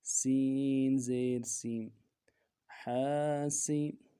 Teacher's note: سین کو نرمی سے پڑھیں گے، سین کی سیٹی باریک ہوگی